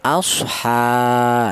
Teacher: Ini menunjukkan bahwa huruf ha tersebut dibaca panjang. Panjangnya satu alif sama dengan dua harakat atau dua ketukan. Asha ya. Boleh dibaca mad thaobi'i juga boleh.